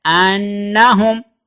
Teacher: نون کے اوپر شد آئے گی تو وہاں اس کو 2 دفعہ پڑھیں گے، آواز بھی ناک میں جائے گی